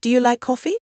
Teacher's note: A rising tone at the end signals a yes no question